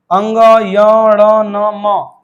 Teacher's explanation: पांचों वर्ग के अंतिम व्यंजन पंचमाक्षर जो होते हैं वह नासिका से ही बोले जाते हैं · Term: नासिक्य